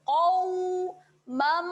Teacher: Qaw ini kita bacaan lin, kita muncungkan mulut. Qawmam. Kat sini terhasilnya bacaan dengung kerana terdapat tanwin tidak selari berjumpa dengan huruf mim.